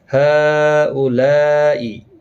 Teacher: دونوں جگہوں پر مد متصل ہے، چار الف کی مقدار کے برابر کھینچ کر پڑھیں گے، چار چار الف۔